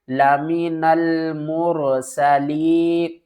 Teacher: یا ساکن ہے، اس سے پہلے زیر ہے، حروف مدہ ہے، ایک الف کی مقدار کھینچ کر پڑھیں گے